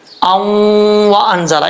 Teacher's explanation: ادغام یرملون غنہ کے ساتھ پڑھا جائے گا